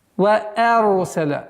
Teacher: Ра с сукуном твердое произношение, а хамза мягкая.